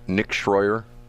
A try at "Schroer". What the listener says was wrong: Nick Schroer. There's no I in Schroer.